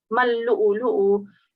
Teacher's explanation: Yeah, it's still coming as you're reciting ma first and then you're reciting lu'lu'u, but you need to really connect mal-lu'lu'u. So you need to connect the mim with the lam because the lam is carrying a shadda.